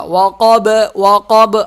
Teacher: وقب، قاف موٹا ہوگا، با پہ قلقلہ ہوگا۔ وقب، وقب، آواز ہل رہی ہے، اس کو قلقلہ کہتے ہیں